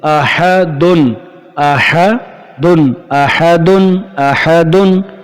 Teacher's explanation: تو یہاں تنوین کے بعد حروف حلقی کا حمزہ آ رہا ہے، حروف حلقی کا حمزہ آ رہا ہے، اس لیے یہاں پر بھی غنہ نہیں ہوگا.